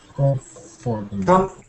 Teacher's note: The little one between comf and fur is too quiet, so quiet that you can throw it away, because it's impossible to go wrong if you throw it away.